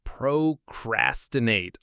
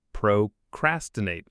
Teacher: The stress in procrastinate falls on the second syllable, so it's procrastinate. The crass part is the one that gets the most weight.